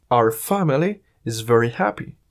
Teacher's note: la palabra Our si se dice de una manera rápida suena igual a r